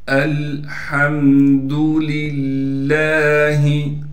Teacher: حمزہ کو لام سے ملائیں گے، ہا کو اس کے بعد میم سے ملانا ہے، ہا کو صاف کر کے گلے سے نکالیں گے۔